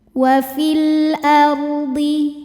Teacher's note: Alif dengan harakat fathah ini adalah hamzahnya. Maka lam sukun dibaca izhar atau jelas. Wail ardhi ar ro sukun dibaca secara tafkhim. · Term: alif lam qamariah